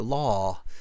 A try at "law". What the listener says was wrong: Really drop the ah. So law, not la, law.